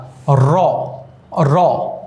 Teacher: দেখো দাঁতের মূলে গিয়ে লাগছে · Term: দন্তমূলীয় ব্যঞ্জন